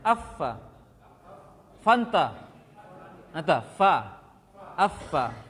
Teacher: ujung gigi seri atas dengan perut bibir bawah. Dalamnya, bukan di luarnya, ya.